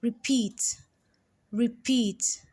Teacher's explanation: it has two syllables but the second syllable is stressed more than the first